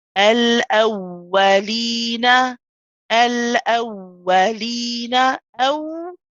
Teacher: I hold the aw, I let the sound run for the rakhawa. I then pronounce the fatha and say wa.